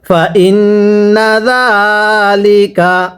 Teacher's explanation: নুনে যদি তাজদিদ হয় গুন্নাহ করে পড়তে হয়